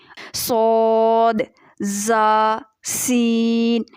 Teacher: یہ ایسے حروف ہیں 3 صفیریہ جن میں سیٹی لازمی آنی چاہیے